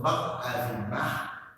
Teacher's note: Ma is a bit bilabial, but air also passes through nasal cavity. That's why pa, ba and ma, these sounds are identified as bilabial or its variation.